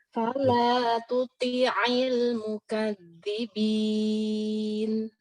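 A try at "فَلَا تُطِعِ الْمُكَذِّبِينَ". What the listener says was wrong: Oke, secara huruf udah benar, bagus. Tinggal sempurnain harokat. Hati-hati kasrah itu sudah rentan imalah. Tuti'il, tuti'i. Nah, jadi kasrah itu, apalagi kalau kasrah yang gandeng-gandeng, tadi itu, ayyikumul maftun. Sekarang fala tuti'i ya. Itu kadang-kadang tutinya, toknya kasrah. Ainnya ngarah imalah. Fala tuti'il.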